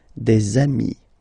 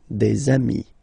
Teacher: if you make the liaison, so the link between the two, you will get des amis